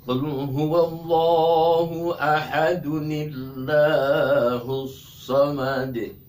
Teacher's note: Kalau tadi itu dia satu ayat kita baca Allahus samad tebal Allahnya, setelah kita wasol atau disambung dari ayat 1 ayat kedua, Allahnya jadi tipis, kemudian tadi itu ditambah dengan huruf nun di antara tanwin dengan alif. Kemudian kalau dia mau diputus ayat kedua dalam ilmu tajwid, dia harus qalqalah.